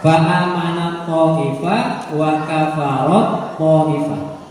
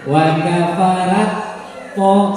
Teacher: Ini taknya tidak usah dibaca, langsung ke huruf to.